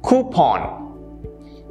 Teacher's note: Notice the stress? It's on koo.